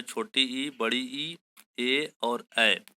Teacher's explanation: हमारे मुंह के अगले हिस्से से जो बोले जाते हैं उनको कहा जाता है अग्र स्वर